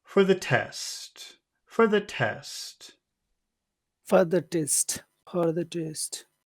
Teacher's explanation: we have to start high because it's the beginning of a phrase so we'll make that high but then when we get to test we'll make that low